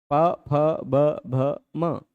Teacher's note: बोलते समय दोनों ओष्ठ आपस में टच हो रहे हैं, इस कारण इनका उच्चारण स्थान हो गया ओष्ठ।